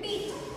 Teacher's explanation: the word pit and vowel, which is I, stays in one position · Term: monophthongs